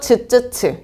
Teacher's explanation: 그 다음에 파찰음은 파열음의 파와 마찰음의 찰자가 합쳐져서 만든 소리라고 생각하시면 돼요. 그래서 막았다가 서서히 터트리면서 마찰을 일으키죠. 그래서 즈쯔츠.